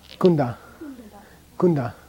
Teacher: Because it has an open vowel sound. It has a big fat oo in front of it. And then the N has room to move. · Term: prenasal